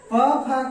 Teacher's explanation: त थ का उच्चारण करते हैं तो स्वर तंत्र में कंपन नहीं होता है · प फा का उच्चारण करेंगे तो स्वर तंत्र में कंपन नहीं होता है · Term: अघोष